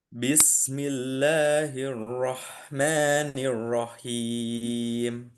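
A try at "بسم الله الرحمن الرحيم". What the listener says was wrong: Ya, nanti lebih halus lagi haknya. sebenarnya enggak sih, karena H itu bukan huruf guna kan. Harusnya tetap jelas.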